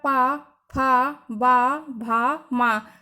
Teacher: जो हमारे upper lips और लोअर लिप्स हैं वो आपस में एक दूसरे से कनेक्ट होते हैं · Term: ओष्ठ